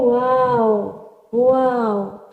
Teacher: इसका जो मखरज है वो है होंठों की ना तमाम गोलाई, यानी दोनों जो होंठ हैं वो हमारे, जैसे हम सीटी बजाते हैं ना, अक्सर लोग बजाते हैं तो होंठ बिल्कुल गोल हो जाते हैं, तो इसी तरह ये जो इसका मखरज होगा वो भी दोनों होंठ जब गोल होंगे तो वाव अदा होगा।